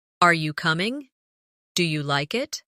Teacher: In English, our voice usually rises at the end of a yes or no question. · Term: rising tone